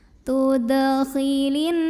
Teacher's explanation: Cara bacanya dengung. Bunyi n-nya tahan sampai bergetar halus ke hidung kurang lebih 2 harokat. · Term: nun musyaddadah